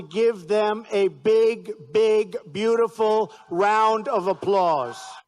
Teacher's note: he's emphasized every single word for rhetorical purposes. And so he used the strong form of them to make it more emphatic.